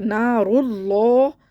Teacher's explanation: اور نار اللہ پڑھ دیتے ہیں، باریک پڑھ دیتے ہیں اس کو، را کو تو موٹا پڑھنا ہے اس کو رو. اور لفظ اللہ کے لام کو بھی موٹا پڑھنا ہے کیونکہ لفظ اللہ کے لام سے پہلے پیش ہے، اس لیے اس کو موٹا پڑھنا ہے.